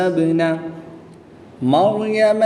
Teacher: با حرف قلقلہ میں سے ہے اور جب حروف قلقلہ ساکن ہو تو ان میں قلقلہ خوب ظاہر کریں گے